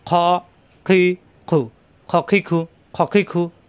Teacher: খ কণ্ঠনালীর ভিতর থেকে, অর্থাৎ শেষ অংশ